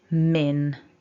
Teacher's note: doing to block off the airflow with the first sound um the lips are together and with the um we block it by raising the tongue so it should be quite nasal